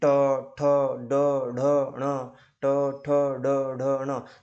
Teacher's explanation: आपका जीभ का मसूड़ों से जब टकराव होता है उसे मूर्धन्य मूर्ध या मूर्धन्य बोला जाता है · जैसे त थ द ध न तो ये जो त थ द ध न है ना इस का उच्चारण करते हो तो जीभ का दांतों से टकराना होता है और जब ट ठ ड ड न का उच्चारण करते हो तो जीभ का दांत से ऊपर मसूड़ों से टकरावट होता है